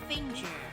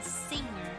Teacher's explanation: finger has that extra g sound but singer doesn't